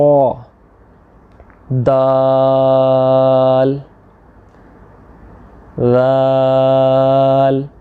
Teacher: दाल में हमने ज़ुबान की नोक को सनाया उलिया की जड़ में लगाया